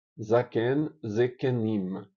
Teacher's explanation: segunda vogal não muda porque é longa